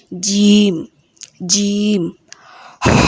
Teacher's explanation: জিম জিহ্বার মাঝ হতে শক্তভাবে বলতে হবে।